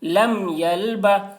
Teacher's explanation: لم یل، با زبر با، با کے اوپر زبر ہے، زبر کو جلدی پڑھیں، تھوڑا بھی نہ کھینچیں